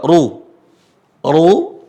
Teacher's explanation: dia agak mirip keucap O tapi sebenarnya u dia tapi dia tebal makanya istilah tebal di huruf hijaiyah bukan pengucapan seperti huruf o